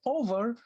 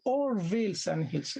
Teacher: "I wandered lonely as a cloud that floats on high, over vales and hills." But if he says over, that will break the rhythm. So he has to delete the V and to render it into one syllable only, not two syllables. So it's or.